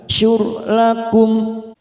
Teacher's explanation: ro sukun yang didahului dhammah, kita baca tafkhim tebal